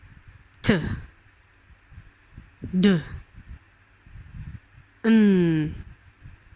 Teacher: In an alveolar consonant, the tongue tip approach or touch the alveolar ridge, the ridge immediately behind the upper teeth.